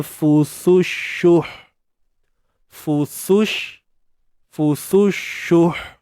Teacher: Matikan ha, macam mana nak matikan ha ni? Bawa balik kepada makhraj ha, iaitu pada tengah kerongkong.